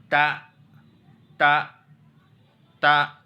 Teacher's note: تا کا مخرج سیم جیسا کہ ہم نے الف کا دیکھا تھا، وہی مخرج تا کا بھی ہے، زبان کی نوک اوپر کے دانتوں کی جڑ، اوپر کے سامنے والے دانتوں کی جڑ